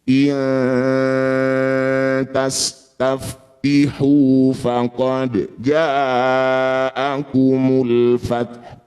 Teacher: Saat berdengung lisan kita sudah ada di tempatnya ta. Iya. Ujung lidah sudah nempel di pangkal gigi seri atas. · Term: ikhfa akrob